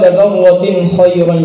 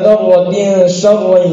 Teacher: کے ساتھ ہوتا ہے، جبکہ وَمَن يَعْمَلْ مِثْقَالَ ذَرَّةٍ شَرًّا يَرَهُ، یہاں تنوین کے بعد شین ہونے کی وجہ سے ایک الف کے بقدر غنہ ہوتا ہے